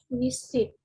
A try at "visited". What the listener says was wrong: My father, good, visited. This one, you have to pronounce the et behind it after the T or the D verb. Visited. My father visited my grandparents yesterday.